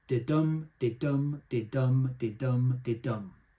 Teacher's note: And there's 5 unstressed beats and there's 5 stressed beats. And that makes there's sort of 10 beats, as it were, altogether. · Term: iambic pentameter